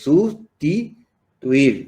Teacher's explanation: se carga la voz en la última sílaba y la última sílaba es tuir. Entonces, por eso no se separa, van juntos. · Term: aguda